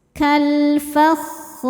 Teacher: Ada hukum alif lam qamariyah karena alif lam menghadapi huruf qamariyah yaitu fa, maka lam dibaca jelas.